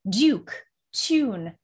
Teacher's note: it's as if they're putting a y after a consonant and in front of a u vowel it makes it sound a little more posh a little more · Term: liquid you